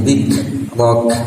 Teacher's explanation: Kaf mati atau dimatikan sama atau terdengar suara anginnya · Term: hams